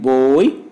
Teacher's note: The glide for this diphthong begins near the back half open position and moves in the direction of E. Oi is a glide from back half open position to front just above half closed position.